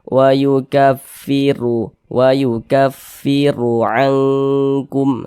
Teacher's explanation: maka huruf ra dibaca tabkhim, dibaca tebal sehingga pangkal lisan kita naik terangkat ke atas ketika kita mengucapkannya. Tebalkan huruf ra-nya.